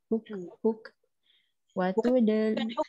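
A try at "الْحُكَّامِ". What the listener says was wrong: dia tak mati hukka tu tak baca panjang.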